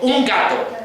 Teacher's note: si digo un gato, otra vez vuelve a ser oclusiva